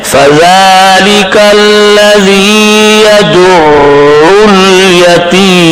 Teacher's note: وہ اس کو نہ تو سخت پڑے گا عین کو اور نہ نرم پڑے گا جاری، درمیان آواز سے پڑھ کے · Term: توسط